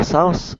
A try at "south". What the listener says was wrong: let your tongue get right between your teeth, between the upper teeth and the lower teeth, and go south. Make sure it's a TH, not an S.